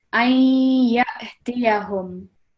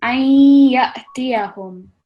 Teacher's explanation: Make sure there's a slight nasal sound coming through